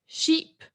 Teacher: it's a monophthong because it's just one sound